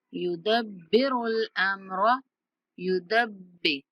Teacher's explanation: दाल को बा के साथ मिलाते हुए बा पर थोड़ी सख्ती करेंगे। युदब्बिरुल अम्र, रा को लंबा नहीं करना।